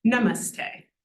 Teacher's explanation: So in namaste, we have na, but then our middle syllable is actually mus, and then te, the vowel, is also long. So na is the only short one, namaste. So we sort of build up in terms of the weightiness.